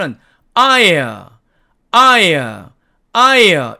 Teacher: 맨 앞에 가 아 처럼 가장 크게 소리가 나고 두번째는 소리가 거의 죽었다가 세번째 모음은 소리가 살짝 들리는 정도가 되는 거에요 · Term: 3중 모음